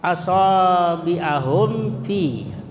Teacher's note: cara membacanya mim mati itu disuarakan dengan terang dan jelas di bibir serta mulut tertutup. Apalagi huruf yang datang sesudahnya itu adalah fa. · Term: izhar syafawi